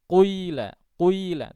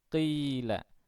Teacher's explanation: huruf qaf, ghain dan kha itu ketika berharokat kasrah, dan ada kasus yang lain juga, itu tafkhimnya berkurang, ya, sangat tipis begitu, maksudnya sedikit, ya, sehingga dinamakan tafkhim nisbi.